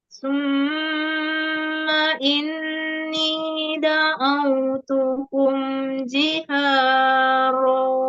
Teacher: Summa ini. Sumnya dengung, tapi ma-nya jangan ditahan. Nggak ada panjang di situ ya.